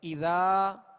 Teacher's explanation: ذال کے آگے جو الف ہے یہ الف مدہ کہلاتا ہے، یعنی الف سے پہلے زبر ہو تو الف مدہ ہوگا اور اس کو دراز کریں گے، یعنی اذا تھوڑا سا دراز کریں گے، 2 حرکت یا 1 الف کی اس کی مقدار ہے تو اس کو دراز کریں گے.